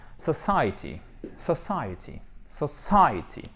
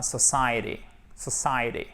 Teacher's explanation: le T ici va être prononcé presque comme un de puisqu'il est coincé entre deux voyelles